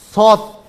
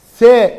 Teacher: Sat dolu olarak okunuyor bakın. Se ince olarak okunuyor.